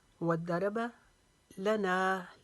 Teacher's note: لا کو لمبا نہیں کریں گے، نا کو لمبا کریں گے ایک الف کے جتنا، کیونکہ یہ الف مدہ کا قاعدہ بن رہا ہے۔